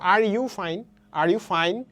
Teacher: এখানে কিন্তু স্ট্রেস ফেলা হচ্ছে কি ফাইনে